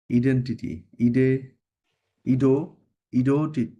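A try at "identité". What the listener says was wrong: ইদন্তিতে, টিটা কখনোই ট উচ্চারণ হবে না ফরাসিতে, হ্যাঁ? নেভার, সবসময় ত উচ্চারণ হবে।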